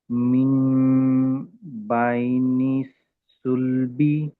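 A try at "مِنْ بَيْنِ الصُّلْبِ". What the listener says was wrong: సుల్ దగ్గర దీర్ఘం లేదు, త్వరగా చదవరు. సుల్బి. బై నిస్సుల్బి. సాద్ మీద శ్రద్ధ ఉంది. మిమ్ బై నిస్సుల్బి.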